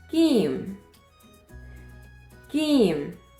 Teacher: That way of pronunciation is only and particularly in Egypt, while in all Arabic countries it is pronounced as Jim. We in Egypt pronounce it as Gim, like go in English.